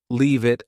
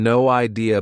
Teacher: leave it and no idea both sound like they have no spaces between the words